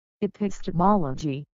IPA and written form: ɪˌpɪstɪˈmɒlədʒi (EPISTEMOLOGY)